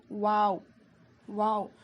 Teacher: دونوں ہونٹوں کو گول کرنے سے اور نہ ملانے سے واو ادا ہوتا ہے. اس کو ہم 5 الف کے برابر کھینچ کر پڑھیں گے.